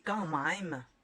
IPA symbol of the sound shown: ɑ̃